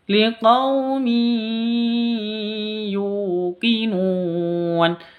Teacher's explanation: Cara bacanya masuk ke ya, mi, seperti itu. Disertai dengung 2 ketuk karena idgham bi gunnah.